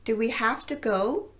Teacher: I also reduced have to down to half to